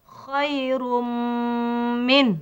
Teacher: Masuk dan dia dengung. Kalau kita masukkan tak dengung, salah. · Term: Idgham ma'al ghunnah